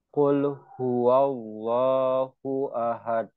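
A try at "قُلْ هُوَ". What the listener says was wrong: Lam. Nah, lamnya coba dilatih apa mengalir. Qulhu. Hu. Huwa. Ya, jadi lam ini kenapa kita nggak boleh membaca qul huwa ya? Karena tidak boleh disyidah, harus alir tawassut. Qul huwa.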